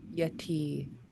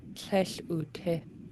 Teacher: Yeah, that's the tone in the second syllable. So yeti is long and low in the positive form. In the negative form, it goes short and high.